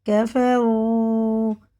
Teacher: واو ساکن سے پہلے پیش ہے تو الٹے پیش کی طرح سے کھینچ کے پڑھیں گے